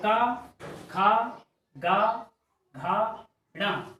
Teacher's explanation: का वर्ग का प्रत्येक वर्ण कंठ से बोला जाता है